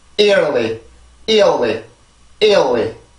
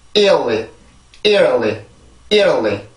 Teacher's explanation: 앞에 있는 음절에 강세가 있고요. 뒤에는 순수 음절이에요. 그래서 리듬이 두 개죠. 큰 리듬이 하나, 작은 리듬이 하나.